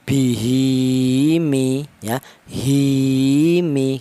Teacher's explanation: Untuk panjangnya yang maselah qasirah itu dua harokat atau dua ketukan